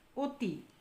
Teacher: অনেক সময় দেখা যায় অ এর উচ্চারণ অনেকটা ও এর মত হয়েছে এই ধরনের উচ্চারণকে বলা হয় সংবৃত উচ্চারণ সংবৃত উচ্চারণ যেমন অতি